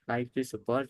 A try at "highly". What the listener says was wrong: Again, you make the g sound here. Highly. Don't go highly.